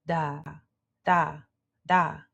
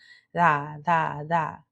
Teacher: So think of it like that. Think of it as a light D or a light th sound, not quite th, but da, da, da.